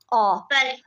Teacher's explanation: Sanki dilinin arxa hissəsi yuxarı qalxır. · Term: dil arxası